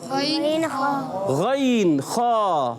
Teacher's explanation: موٹا بھی کرنا ہے مگر ہونٹ گول بھی نہیں کرنا ہے